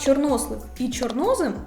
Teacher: у словах чорнослив і чорнослив наголос падає на другий склад